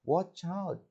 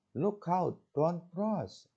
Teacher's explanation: All the words in the warning are stressed, but the last word has higher tone.